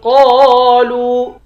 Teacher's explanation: وَإِذَا رَأَوْهُمْ قَالُوا، قاف کے بعد الف ہے، الف حروف مدہ ہے، اس کو بھی ایک الف کی مقدار کھینچیں گے، لام کو واو سے ملا کر واو کو بھی ایک الف کی مقدار کھینچیں گے، واو پر مد ہے، اس مد کو 3 الف کی مقدار کھینچ کر پڑھتے ہیں۔